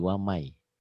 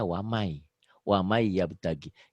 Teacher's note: N-nya hilang kan tuh. Mana N-nya nggak ada. Padahal ditulisnya waman. Dibacanya wamai. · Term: idgham biguna